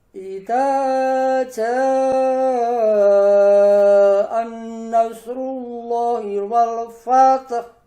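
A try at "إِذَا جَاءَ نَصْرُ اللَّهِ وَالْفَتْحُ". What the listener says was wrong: Nah, tadi jangan sampai masuk, jangan anas tapi anasru.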